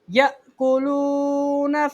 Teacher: حمزہ ساکن کو ہمیشہ جھٹکا دے کے پڑھا جاتا ہے